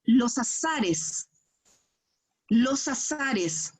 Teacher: Está perfecto porque unes la consonante con la vocal.